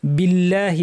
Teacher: যাবে না বিল্লাহি বলার সময় আল্লাহ শব্দের লাম ভারী হয় কিন্তু যদি আগে জের থাকে যেমন এখানে বা জের বি আছে তাহলে পাতলা হবে